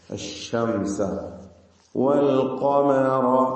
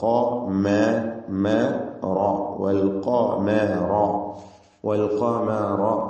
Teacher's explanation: ഖാഫ് തഫ്ഹീം ചെയ്യണം, ഇസ്തിഅലാന്റെ അക്ഷരം, എന്നാൽ മീമിന് തഫ്ഹീം ഇല്ല.